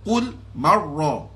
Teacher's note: jangan digerakkan limdah berlebihan di sini sebab ra tu ra tebal. Ra berbaris fathah.